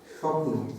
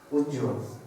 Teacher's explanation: অন্তস্থ ব যেটা হচ্ছে স্বপ্ন, দেখো এখানে বয়ের উচ্চারণ পাচ্ছ কিনা? পাচ্ছে না।